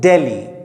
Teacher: जैसे हम लोग दिल्ली कहते हैं और अंग्रेज कैसे बोलते हैं, दिल्ली, ठीक है। मतलब हिंदी साउंड में द तो है, लेकिन इंग्लिश में आपका ड, आपका इंग्लिश में द नहीं है